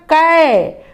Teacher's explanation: ऐ की मात्रा का उच्चारण थोड़ा लंबा खींचकर किया जाता है।